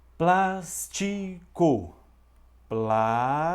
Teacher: o plas é a sílaba mais forte